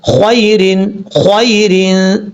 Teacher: یا لین کا مطلب اس کو لمبا نہیں کریں گے، شارٹ کٹ پڑھیں گے۔ اب یہاں پر یا ساکن سے پہلے زبر ہے خوا کے اوپر تو اس کا مطلب یہاں پر یا مدہ نہیں ہے، یہاں پر یا لین ہے۔